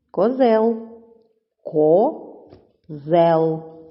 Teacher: це слово ділиться на два склади перший ко другий зел наголошений другий склад